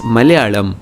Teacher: If you look at the Malayalam spelling, you notice that the two L's are different. एक वो simple ल है जिसे कहते हैं alveolar ल, मगर दूसरा retroflex है. So it's not Malayalam, it's Malayalam.